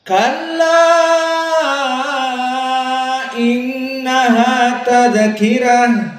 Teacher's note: maka di qiraah dari wars dibaca dengan al-isba, kenyang, 6 harokat paling panjang. Kenapa? Karena dia majaiz munfasil kalla matobi'i bertemu dengan hamzah di kalimat yang terpisah.